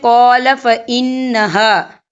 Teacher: یہاں نون مشدد ہے تو یہاں پر غنہ ہوگا، اور ہا، یہاں خالی الف سے پہلے زبر ہے تو یہاں پر الف مدہ ہو رہا ہے تو ہم یہاں 2 یا 3 حرکت کے برابر کھینچ کے پڑھیں گے۔